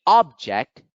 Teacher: when accented on the first syllable object is a noun when accented on the second syllable object it becomes a word